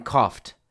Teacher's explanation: O U G has many different pronunciations, but in this case, the gh has an F sound. F is an unvoiced consonant, so it will take the T sound.